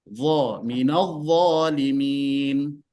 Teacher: Dha itu dikeluarkan sedikit ujung lidahnya. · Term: makhraj huruf dha